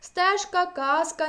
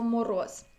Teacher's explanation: усередині та кінці слова дзвінкі приголосні не оглушуються і вимовляються чітко